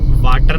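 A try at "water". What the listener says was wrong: नहीं होता, वाटर होता है। ओ, आ नहीं है, ओ है, वाटर।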